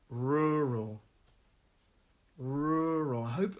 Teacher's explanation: 2-syllable word, stresses on that first one.